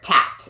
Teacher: they can't say the cuh cuh sound, they'll say a T instead. So you'll hear tat instead of cat. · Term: phonological processes